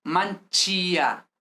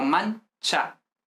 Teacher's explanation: La i no se pronuncia realmente